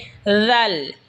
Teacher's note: জিহ্বার আগা সামনের ওপরের দাঁতের আগার সঙ্গে লাগা উচ্চারণ হবে দাল। এই সা যেখান থেকে উচ্চারণ হয়েছে সেখান থেকে দাল উচ্চারণ হবে।